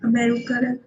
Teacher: mostly the vowel sounds of the unstressed syllables are reduced to the shortest schwa sound or the shortest e sound